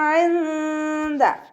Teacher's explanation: ജസാഉഹും ഇൻദ ഇവിടെ ഐനെ ശ്രദ്ധിക്കുക. വസത്തുൽ ഹൽക്കിൽ നിന്നാണ് ഐന് പുറപ്പെടുന്നത്, അതിൻ്റെ മഖ്റജ് ക്ലിയർ ആക്കുക കേട്ടോ.